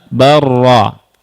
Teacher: Lam bertemu ra, lihat bal ra. Bal ra. Tapi dibaca huruf ra. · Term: idgham